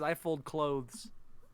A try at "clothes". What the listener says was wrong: you pronounced the, you pronounced the T and the H in that word. say it like I'm closing a door.